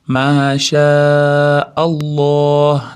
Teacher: Keyin Alloh lafzini lomi doim bir, ikki deguncha cho'zib aytadi. Masha Alloh bo'lib to'xtab qolmasdan masha Allah deb ozgina cho'zib to'xtaymiz.